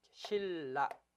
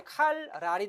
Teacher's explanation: 음의 동화, 즉 소리가 바뀌는 것을 말합니다. (20항) 니은은 리을의 앞이나 뒤에서 리을로 동화됩니다.